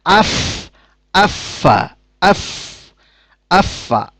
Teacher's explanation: দুটি দাঁত সানায়ে উইল্লা এই সানাউল্লা দাঁতের এই মাথা অগ্রভাগ এবং নিচের ঠোঁটের যে অংশটুকু ভেজা থাকে সবসময় এই ভেজা অংশের সাথে মিশিয়ে উচ্চারিত হয় ফা